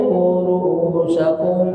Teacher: Ru'usakum ada hamzah, kemudian sesudahnya wawu, dia mad badal, dibaca 2 harkat.